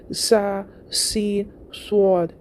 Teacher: जो ऐसे फिसफिसाने की आवाज़ शुरू में आती है उसको सीटी कहते हैं